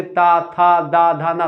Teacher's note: त में आपकी जो जीभ होती है वो आप आपके दांतों में आती है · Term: दंत आपके व्यंजन